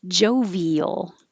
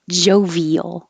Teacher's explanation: your tongue goes very high when you say e and then it slides down to make an l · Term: invisible y